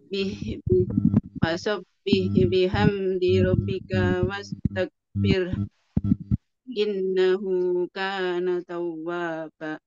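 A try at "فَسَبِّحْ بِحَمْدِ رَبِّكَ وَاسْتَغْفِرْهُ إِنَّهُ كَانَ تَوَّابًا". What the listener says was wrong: Ya, Masya Allah.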